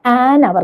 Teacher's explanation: അപ്പോൾ അവിടെ H silent ആണല്ലേ, എച്ച് നമ്മൾ പറയില്ല. ആ വാക്ക് ശരിക്കും പറഞ്ഞാൽ ആ എന്ന സ്വരത്തിലാണ് തുടങ്ങുന്നത്